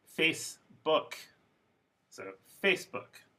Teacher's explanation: the stress is on the first syllable but book does not become a schwa because it's a compound